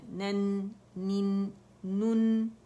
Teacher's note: اور آواز چلے گی، دیکھیے غنہ ناک میں سنائی دینا چاہیے.